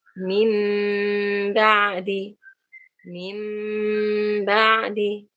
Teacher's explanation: Nun sukunnya ketika bertemu ba, maka konsekuensi hukumnya nunnya diganti huruf mim. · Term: iqlab